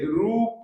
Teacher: रूप र में जो उ है ना वो बड़ा है